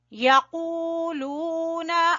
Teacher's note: قاف کو موٹا پڑھیں گے، کھینچیں گے واو مدہ کی وجہ سے، لو کو بھی کھینچیں گے، پھر نون مشدد کا غنہ کریں گے، الف مدہ کو کھینچیں گے.